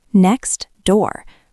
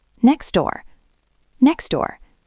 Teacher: We just throw the T away. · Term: elision